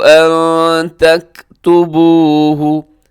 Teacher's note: نون ساکن کی بعد تا یہاں اخفا کیجیے گا